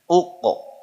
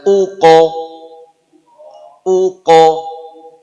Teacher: ini qof sukun nanti punya hukum apa qolqolah dia mantul